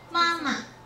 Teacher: we change the second word from first tone to neutral